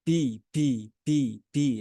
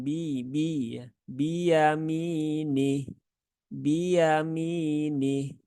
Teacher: ketika mengucapkan huruf ba itu tidak disertai dengan keluarnya udara